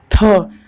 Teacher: तो हमारी जो जिह्वा है यानी जो जीभ है वो हमारे दांत को टच कर रही है, यानी कि ये दंत से इसका उच्चारण होगा।